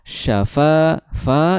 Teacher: Kemudian syafa, fa itu makhrajnya sama, tadi sudah disebutkan di awal ayat. Fa makhrajnya adalah di ujung gigi bertemu dengan bibir bawah. Fa disertai dengan mengalirnya udara.